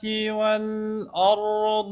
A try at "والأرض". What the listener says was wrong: والآ لا تقل والآ والآ والأر والأرض والآ لا، والآ والآ أه أه والآ عاد تتفخم عندك، لا تتفخم.